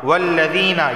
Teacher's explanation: یا سے پہلے زیر ہے تو اسے ایک الف کے برابر کھینچ کر پڑھا جائے گا